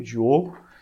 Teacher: Você percebe que tem dois Os, o longo e um O breve